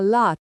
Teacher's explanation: Stress the first syllable, and every 'A' is an [ah].